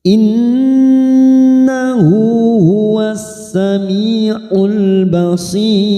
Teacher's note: kita baca tarkik atau tipis karena ada ya sukun yang sebelumnya juga kasroh maka kita baca tipis dengan posisi bibir meringis ya Sekali lagi ini kita baca tarkik bukan tafkim tipis innahu